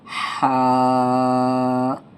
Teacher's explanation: ہا کو ایک الف کی مقدار کھینچیں گے